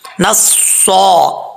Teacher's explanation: صاد حروف مستعلیہ میں سے پر پڑھا جائے گا اور اوپر کھڑا زبر ہے، ایک الف کی مقدار لمبا بھی کیا جائے گا